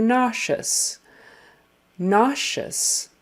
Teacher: Sh, sh. And the middle sound of nauseous is that sh, sh sound, even though it is spelled with just an S-E-O-U-S